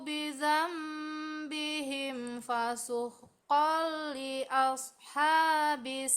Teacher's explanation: ashabis sedikit ditekan karena tasdid